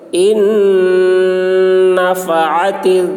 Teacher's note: نون مشدد غنہ ہوگا